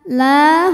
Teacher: la hukumnya Mad thii ziri sebab ada Alif didahului harakat fathah maka huruf lam panjang dua harakat